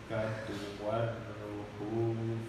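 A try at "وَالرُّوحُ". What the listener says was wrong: Yang panjang ru-nya warruhu.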